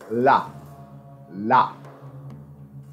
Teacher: In some words, it appears to have been pronounced as a voiced alveolar approximant and may have been pronounced all words by some dialects of ancient Egyptian. It is produced by narrowing the vocal tract at the place of articulation, but not enough to produce a turbulent airstream with either the tip or the blade of the tongue at the alveolar ridge.